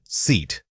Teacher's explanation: the tongue needs to feel like it is stretching back in your mouth to create that extended e sound.